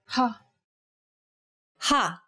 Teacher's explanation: saying this sound involves a forceful expulsion of air